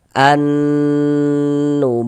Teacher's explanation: kita dengungkan ini di bagian an-nya itu suaranya itu kita tahan, kita panjangkan sejenak